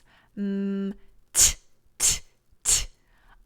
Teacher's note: I am partially blocking the air when I say t from my tongue hitting my teeth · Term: consonant